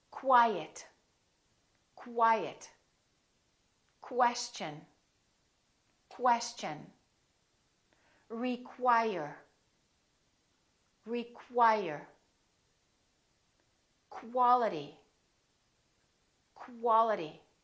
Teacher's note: are spelled with q u they're pronoun oun as k w so there's a little W sound in here